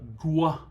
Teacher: you've got a g with lip rounding